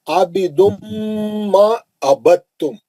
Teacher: ادغام متجانسین ہے. آپ دال نہیں پڑھیں گے اس میں، دال ساکن کا تام میں ادغام متجانسین ہو رہا